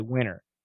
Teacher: However, we study in DDM that the T can be canceled, and some people say winter. In that case, it's all vibrated. There's no aspiration in winter, winter, winter, winter, if we say it fast.